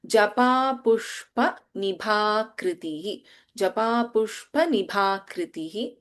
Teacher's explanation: Bha is Mahaprana and the word is ending with a Visarga.